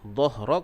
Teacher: dhahrak huruf ha tu makhrajnya di bahagian pangkal kerongkong. Dhahrak di bahagian berdekatan dengan dada.